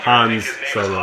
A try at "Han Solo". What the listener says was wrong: It is not Hans Solo. It's pronounced... Actually, it's pronounced Han.